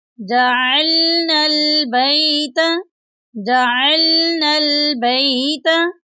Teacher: वइज़ जअलनल बैत, यहाँ पर देखें जो लफ्ज़ है जअलनल बैत, इसमें जीम के बाद आइन है, आइन की हम हलक से अदायगी करेंगे, आइन की जगह हमज़ा नहीं पढ़ेंगे।